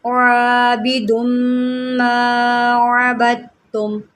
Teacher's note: اب یہاں پر دیکھیں میم مشدد ہے، یہاں ہم نے غنّے کے ساتھ پڑھنا ہے، میم مشدد جب بھی ہوتا ہے ہم اس کو غنّے کے ساتھ پڑھتے ہیں